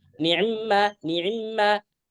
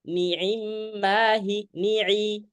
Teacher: Kalau adapun bacaannya Hafs kita, bacaan kita itu ainnya ain jelas, ain kamilah, ain sempurna. Maka nggak boleh bacaan kayak ikhtilas.